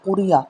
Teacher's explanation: را کو باریک پڑا جائے گا کیونکہ را کے نیچے زیر ہے